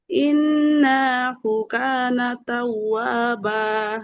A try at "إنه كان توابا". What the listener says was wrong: আপু ইন্না নুনে টান নেই।